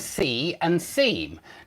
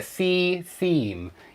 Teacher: you have this EE sound repeated and that's called assonance